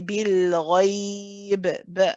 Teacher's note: And then we do the qalqala. Because I'm stopping here, I am putting sakin. So you say bil ghaib, a light bounce at the end.